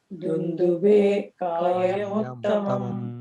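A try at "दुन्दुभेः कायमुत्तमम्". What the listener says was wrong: The visarga means you have to say dundubehe Raghavah pratyayartham tu.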